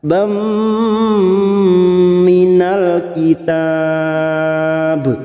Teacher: Nasibam minal, bam fathatain atau fathat tanwin bertemu mim idgham bi gunnah. Nun sukun atau tanwin yang bertemu dengan empat huruf ini siap masuk dan mendengung, masuk pada huruf depannya yaitu huruf mim dan ditahan selama 3 harakat.